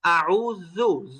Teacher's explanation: জাল উচ্চারণ হয় চিকন হয়ে, আউযু, জু একদম জিহ্বার আগা থেকে হবে। আপনি এটাকে যদি জিহ্বার মাঝখান থেকে নিয়ে আসেন তখন ওটা জিম হয়ে যাবে, না হয় যা হয়ে যাবে।